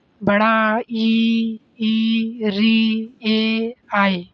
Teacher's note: अवर्तुलित जिन स्वरों के ओष्ठ गोल नहीं होते बल्कि फैल जाते हैं।